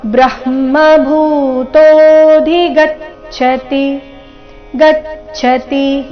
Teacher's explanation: ಇಲ್ಲಿ ಭೂ ಮಹಾಪ್ರಾಣ ದೀರ್ಘ